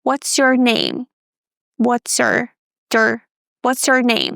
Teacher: Instead of pronouncing your fully, we reduce the vowel and we say your your.